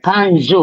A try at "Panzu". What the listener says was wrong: Em que circunstância nós, no final das frases, usamos o U ou O? Tem muito a ver com como como se diz? O término da frase. Panzu. Agora você fala panzo. Então, é preciso termos em conta esses pormenores.